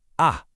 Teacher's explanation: This one is short, sharp, and it drops down fast. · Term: fourth tone